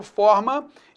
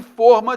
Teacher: a distinção de forma, o timbre aberto, forma, e forma, timbre fechado